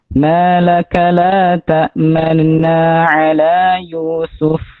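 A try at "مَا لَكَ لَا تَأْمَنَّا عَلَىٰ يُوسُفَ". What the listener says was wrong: Masih ismam itu jatuhnya. La tak manuna. La tak manuna.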